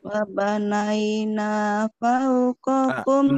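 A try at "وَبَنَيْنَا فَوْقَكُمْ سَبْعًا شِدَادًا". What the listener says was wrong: Nanya kurang lurus. Wabanaina agak nekan sedikit.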